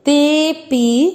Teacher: तीसरा चरण देखेंगे, ते के बाद में है अवग्रह, आपको मात्रा को लंबा खींचना है, ते पी, आपको पी को नहीं खींचना, ते के बाद में अवग्रह, इसलिए ते की मात्रा को लंबा खींचते हुए बोलना है